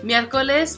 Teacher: Miércoles, meaning Wednesday, has 3 syllables. In this case, the first syllable is going to have the accent.